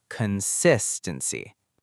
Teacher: the stress is on the second syllable, consistency.